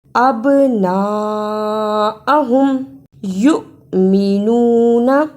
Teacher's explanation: جس حمزہ پر جزم ہو اس کو تھوڑا جھٹکا لگا کر پڑھتے ہیں